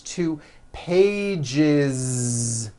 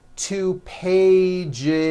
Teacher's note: when you add an S ending this time we always add the ending is with a voiced Z